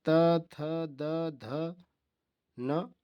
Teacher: ता वर्ग के दंत हैं, दांत से बोले जाते हैं